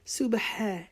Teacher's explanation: ہا کی دفعہ ہم اپنی آواز حلق کے درمیانی حصے سے نکالیں گے اور ہا کو ایک الف کے جتنا لمبا کریں گے